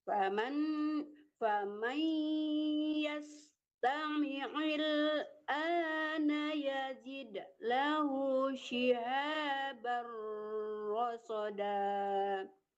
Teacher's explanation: Jangan il tapi ail, tamiil dilenturkan dari tengah-tengah tenggorokan.